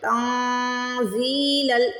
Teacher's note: تن پہ اخفا کرنا ہے، زی کو کھینچنا ہے